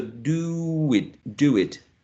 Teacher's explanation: many many speakers would uh connect these two uh vowel sounds with a W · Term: linking W